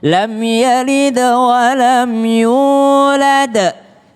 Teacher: Mim sukun ketemu dengan ya tidak berdengung, maka jangan lam yalid wa lam yulad.